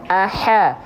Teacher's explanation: Hamsnya harus berbisik, teman-teman sahabat Quran sekalian.